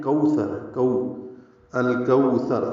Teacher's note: کاف کو الکوثر کے لام سے ملائیں گے، اظہار قمری۔ کو واو لین ہے، ہونٹوں کو آگے لائیں گے